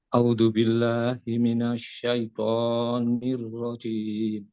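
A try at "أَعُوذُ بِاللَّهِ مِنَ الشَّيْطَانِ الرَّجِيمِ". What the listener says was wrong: Ainnya Pak diperbaiki Pak, ainnya.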